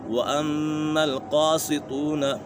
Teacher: میم مشدد میں ہمیشہ غنہ ہوتا ہے، قاف اور طا یہ دونوں حروف مصطلح میں سے ان دونوں کو پر پڑھیں گے۔